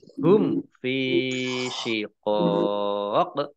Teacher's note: Mim sukun bertemu dengan huruf fa, bacaan idhar syafawi, dibaca jelas.